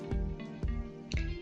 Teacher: En había igualmente la I se pronuncia con fuerza y está junto a la A.